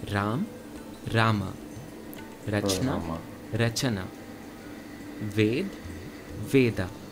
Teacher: Notice how Sanskrit adds an A sound to the end of each letter, while Hindi does not. Almost like there is a halant on the end of each letter. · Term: Shwa